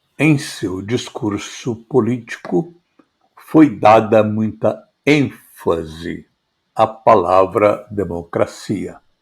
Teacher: ao pronunciar a palavra ênfase, eu dei mais sonoridade, um tom de voz mais acentuado para exatamente destacar a palavra ênfase